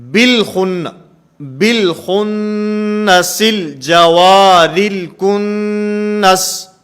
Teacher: یہ حمزہ وصلی ہے، اور کیونکہ درمیانے کلام میں ہے تو درمیانے کلام میں ہونے کی وجہ سے یہاں پر یہ حمزہ وصلی گر چکا ہے